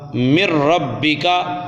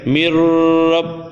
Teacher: را اور لام میں بغیر غنہ کے ادغام ہوتا ہے